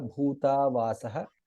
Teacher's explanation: भा इज महाप्राण भू दीर्घ